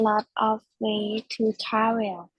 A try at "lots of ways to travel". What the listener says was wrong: But here we'll just try to remember the S sounds. So there are lots of ways, all right, to travel. So always remember the ending S sounds for all these words. So there are lots of ways to travel.